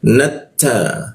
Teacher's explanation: Nat masuk ke ta bertasdid, maka ujung lidah tempelkan ke gigi dia. Nata, ada desis hembusan udara ya ketika membaca ta